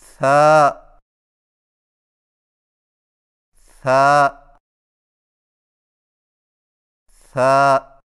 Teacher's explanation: ثا کی ادائیگی میں زبان کی نوک کو ثنایا علیہ کے اندرونی کناروں سے نرمی سے لگا کر باریک آواز میں پڑھیں